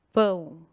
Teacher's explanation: vocês vão sentir um pouquinho de ar por quê porque o ar tá saindo pelo nariz vai fazer uma vogal nasal